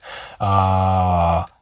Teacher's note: i'm lowering my pitch